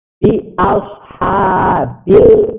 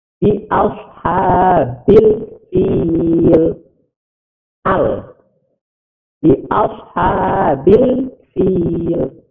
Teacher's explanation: Cara membacanya, alif lamnya dibaca jelas, lamnya. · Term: alif lam komariah